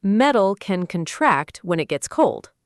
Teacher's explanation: And contract, stress on the second part, is a verb, and it means to become smaller or to shrink.